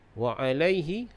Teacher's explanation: Bihi wa alai, bihi menjadi mad silah qasirah 2 harakat dipanjangkan. Wa alaihi, laihi menjadi lin, dibaca dengan lembut